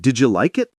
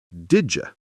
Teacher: The D in did connects with the Y in you, creating a smooth, quick transition. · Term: Connected speech